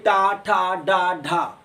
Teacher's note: क्या है, मूर्धन। मूर्धन का मतलब है आपके मुंह की जो छत है, आपके मुंह की जो मूर्धा है दोस्तों, उसमें आपकी जीभ टकराएगी। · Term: मूर्धन्य व्यंजन